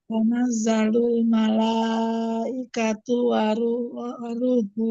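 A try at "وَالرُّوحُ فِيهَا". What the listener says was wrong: war tasdid ra. Warruhu fiha. Diulangi.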